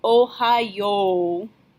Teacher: Your O at the end should be substantially longer than the one at the beginning, Ohayo.